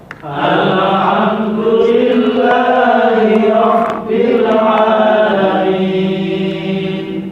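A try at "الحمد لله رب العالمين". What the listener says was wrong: Alhamdu. Enggak boleh mantul. Lidah nempel langit-langit, satu ketukan. Alhamdu. Nah, lidah nggak boleh lepas dari langit-langit. Alhamdulillahi rabbil alamin.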